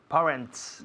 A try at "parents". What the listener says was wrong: no parents, sino parents. Un sonido vocal muy largo, parents.